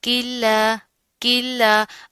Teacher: لام کے اوپر کھڑا زبر آ رہا ہے، اس کو ایک الف کے برابر پڑھا جائے گا